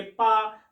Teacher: अगर आप पा वाली लाइन बोलेंगे तो दोनों होंठ जो होते हैं ना वो जुड़ेंगे